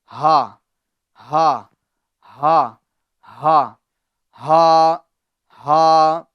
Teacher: حلق کے نیچے والے حصے سے ہا ادا ہوتا ہے، یعنی ہم کو یہاں سے ادا کرنا ہے، یہاں سے نیچے والا حصہ شروع جو ہوتا ہے حلق کا حصہ، ٹھیک ہے، ہا ہا ہا ہا ہا ہا۔